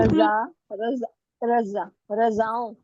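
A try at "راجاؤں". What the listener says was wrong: रजा नहीं है, रे के बाद है, रे के बाद अलीफ है तो राजा पढ़ेंगे, राजाओं।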